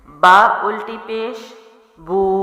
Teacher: میرے ہونٹ گول ہو رہے ہیں اور میں آواز کو لمبا کر رہی ہوں